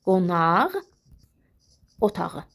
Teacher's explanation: Əgər belə bir ifadə işlənirsə, yəni özündən sonra gələnə yenə deyirəm, diqqət edirik, sait gəlibsə, bu q, x-nın cingiltili qarşılığı olan ğ kimi tələffüz olunur